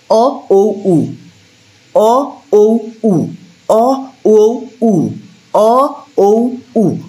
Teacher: কুঞ্চিত মানে হচ্ছে আমাদের ঠোঁটটা ভাঁজ ভাঁজ হবে, আবার গোলাকার হবে, রাউন্ডেড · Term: কুঞ্চিত স্বরধ্বনি